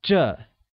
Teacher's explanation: This translates as 这 and is pronounced with a falling tone.